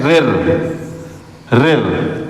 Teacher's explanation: अब हम लोग यहाँ देखें जैसे एक हम लोग स्वर देखते हैं रिर, रिर, तो जीभ में एक तो झन्नाहट पैदा हो रही है और जीभ टकरा रही है ऊपर, रिर। तो जीभ आपकी क्या हो रही है, टेढ़ी हो रही हो, जहाँ टेढ़ी हुई तो वो मूर्धा के अंतर्गत आता है।